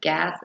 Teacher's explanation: The g sound is a voiced stop sound.